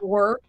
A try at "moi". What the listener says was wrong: Yeah, you said more. Moi.